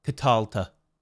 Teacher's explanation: And we have our next suffix, ta. Notice the tav in the suffix has a dagesh lene, a hardening. So instead of a th sound as in the, we have a t sound as in Tommy